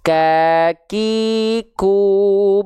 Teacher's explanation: karena memang sifat dasar huruf Kaf itu syiddah tertahan suaranya · Makanya ketika huruf kaf ini dilafalkan, ya, dia ada percikan-percikan nafasnya. Bukan mengalir, tapi percikan karena dia dari segi suara dia tertahan. Karena tertahan suaranya, impactnya ketika dia punya sifat hams, akhirnya hanya berupa percikan nafas saja.